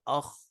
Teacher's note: اب آپ پڑھیں گے نا تو آپ کو پتہ لگے گا کہ جو ہمارا جو منہ کے ساتھ بالکل گلا شروع ہو رہا ہے وہیں پر ہمارا جو ہے وہ زور پڑ رہا ہوتا ہے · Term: ادنا حلق